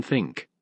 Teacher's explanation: interdental sounds produced with the tongue in between the upper and lower teeth